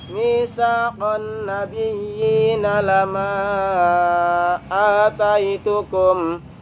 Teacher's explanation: Ya karena setelahnya ada alif yang hidup. Fathah diikuti alif tapi setelahnya ada alif yang hidup, maka dibaca panjang 5 harokat. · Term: majaiz